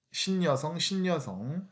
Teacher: 신여성처럼 니은이 갑자기 첨가됩니다.